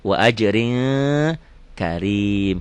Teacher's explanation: Wa ajrin ini ikhfa. N-nya jadi eng. Wa ajrin, rin kan ujungnya N.